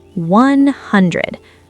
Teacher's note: The stress is on hun.